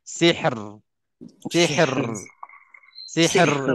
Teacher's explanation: kita wakafnya kita dengan akhirnya tepi lidah depan itu itu yang gegaran tepi lidah ke langit tu gegaran lidah itu berakhir di situ maknanya perkataan ini selamat · Ra itu di tepi lidah